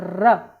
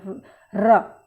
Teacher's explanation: ठीक है, तो जैसे किसी ऊंचाई से कोई चीज़ को नीचे ढलान में डाला जाए तो जो रगड़ खाता है, इसी प्रकार र का उच्चारण करते समय हमारी जिह्वा भी एक तरह से रगड़ खाती है, र, इस प्रकार से। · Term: लुंठित वर्ण